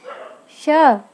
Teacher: ये मूर्धन्य सा है। षटकोण वाले सा को जब आप बोलते हैं तो इसका उच्चारण मूर्धा से होता है, श। तो आपकी जीभ जो है ना ऊपर की ओर जाती है, बिल्कुल आपको पता ही नहीं होता है कि ये जीभ कहाँ स्पर्श कर रही है।